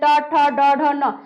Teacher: जीभ पहली बार जहां पे टच किया उस स्थान को बोला जाता है मूर्धा। ट कहते हैं ऊपर वाले ऊपरी हिस्सा में जो है टच करता है।